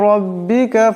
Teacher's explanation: এখানে রার উপর জবর আছে, তাই এই রার আওয়াজটাকে মোটা করে পড়তে হবে।